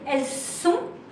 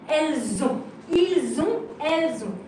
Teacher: You will make the link, what we call la liaison, with a Z.